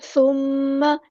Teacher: letter ہے، اور نرمی سے ادا کرنا ہے، ثم نہیں کرنا، ثم میم پہ گنا زمانی ہو رہا ہے، الف کے برابر رکیں گے ، اور میم کی زبر کو لمبا نہیں کریں گے، ثم